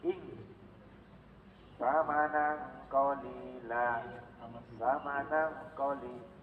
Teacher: tanwin nun mati bertemu kof dan tanwin nun mati temu kaf, itu baca sengau